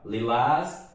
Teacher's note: Lilás é uma palavra oxítona, quer dizer, a sílaba tônica é a última